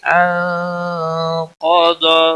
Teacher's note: نون ساکن کے بعد حروف اخفا کا قاف آیا ہے، اخفا حقیقی ہوگا، نون پر گنہ ہوگا